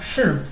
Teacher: La palabra en fonética shi, que sería cuarto tono, shi, en español significa ser o a veces significa estar.